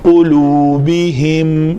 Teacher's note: لام کے اوپر بھی پیش ہے، تو شفتین گول ہو جائیں گے، پرفیکٹ گول۔ جتنے بہترین گول ہوگی اتنی ادائیگی اچھی۔